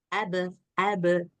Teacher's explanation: Enggak ada nafas di situ enggak ada angin keluar di situ yang keluar itu hanya suara pantulan